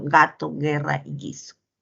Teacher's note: Es sonoro, ¿no? Oclusivo velar sonoro.